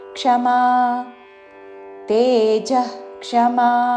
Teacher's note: తేజ క్షమా అనకూడదు తేజః అని ప్రశ్వాస చేసి